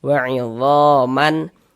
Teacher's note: karena dia izhar maka dibaca jelas dan tidak berdengung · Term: izhar halqi